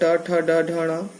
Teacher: कहीं होठ मिलते हैं, कभी जीभ क वर्ग के अंतर्गत कंठ का स्पर्श होता है जीभ से, च वर्ग के अंतर्गत तालु का जीभ से स्पर्श होता है, ट वर्ग के अंतर्गत मूर्धा से जीभ का स्पर्श होता है